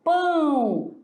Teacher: nós também temos encontro de duas vogais que o som ele sai nasal